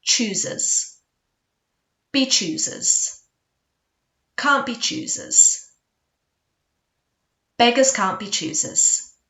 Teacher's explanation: the T at the end of the can't often gets dropped